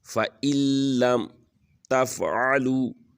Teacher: یہاں پر نون کی آواز بالکل ختم ہو جائے گی، الف کی لام کے ساتھ آواز سنائی دے گی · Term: ادغام بلا غنہ